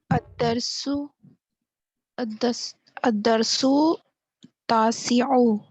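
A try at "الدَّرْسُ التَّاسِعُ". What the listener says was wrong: اس کو ملائیں گے, جب بھی الف لام آئے نا تو آپ نے پیچھے والے کو آگے ملانا ہوتا ہے.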